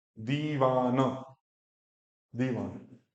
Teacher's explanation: लेकिन ई को यहाँ पे क्या बोलना है, 2 सेकंड का टाइम देना है। दी वा, फिर न, दीवान, दीवान।